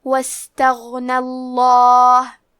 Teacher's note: حرف الغین کی ادائیگی حلق کے اوپر والے حصے سے ہے. غین حروف تفخیم میں سے ہے تو ہمیں غین کو موٹی آواز میں پڑھنا ہے. حرف نون پہ زبر ہے، لہذا لفظ الجلالہ مطلب کلمت اللہ کے لام کا حکم ہے تفخیم، تو ہمیں لام کو موٹی آواز میں پڑھنا ہے.